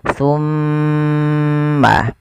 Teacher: Ketika ada mimad maaf mim berharakat tasydid. Cara membacanya ditahan suara mimnya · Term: ghunah, gunnah